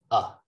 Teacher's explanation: So schwa is right here in the middle. That means my tongue is not up, it's not down, it's not in the front, it's not in the back, just neutral.